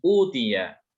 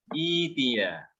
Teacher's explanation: Ini mad badal, ada dua hamzah di situ bertemu. Ada dua hamzah yang bertemu. Hamzah yang pertama dibacanya kan kasroh ya.